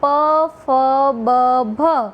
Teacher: એમ કે ગુજરાતીની અંદર પ, ફ, બ, ભ આ 4 વ્યંજનોના ઉચ્ચારણ વખતે ઉપરનો હોઠ અને નીચેનો હોઠ એકબીજાને સ્પર્શે છે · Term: હોષ્ઠ્ય વ્યંજનો